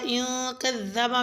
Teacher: نون ساکن ہے، اخفا ہوگا یعنی غنہ کی آواز کے ساتھ پڑھا جائے گا